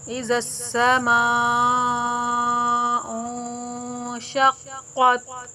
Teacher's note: مد متصل ہے، مد واجب ہے، اس کو 4 سے 5 الف کے برابر کھینچ کر پڑھیں گے۔